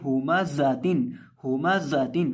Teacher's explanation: जा के अंदर हम सीटी की आवाज़ पैदा करके पढ़ेंगे